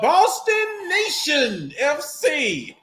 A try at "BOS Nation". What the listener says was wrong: Not Boston Nation. It's Boss Nation. BOS Nation.